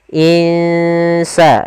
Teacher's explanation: Bagaimana cara membacanya kita samarkan nunnya ke huruf Sin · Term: bacaan Ikhfa, ikhfa tipis